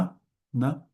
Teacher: This is the dental N, dental na, just a normal na, na, as we're used to pronounce it.